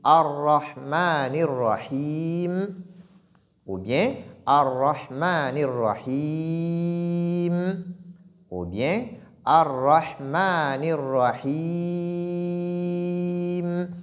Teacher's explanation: nous avons une prolongation qui peut être de 2 mouvements, de 4 mouvements ou de 6 mouvements